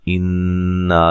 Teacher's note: नून मुशद्दद पे गुन्ना ज़रूरी है